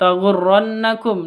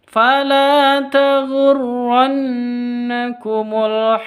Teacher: Nun tasydidnya gunah musyaddadah dengung dua ketuk